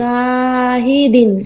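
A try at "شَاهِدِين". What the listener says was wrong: হিদিন না, হিদিন টানবে না তো, হায় কোনো টান নেই, দায় কোনো টান নেই, ঠিক আছে।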